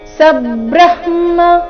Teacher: ಬ್ರಹ್ಮ ಇಲ್ಲಿ ಬ್ರ ಆದ ನಂತರ ಮೊದಲು ಅರ್ಧ ಹ ಆ ಮೇಲೆ ಪೂರ್ತಿ ಮ ಬರ್ಬೇಕು